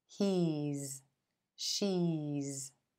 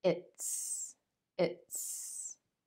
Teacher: After the vowel sound E in he and she, because it's voiced, vowels are always voiced, the S sounds like z, he's. She's.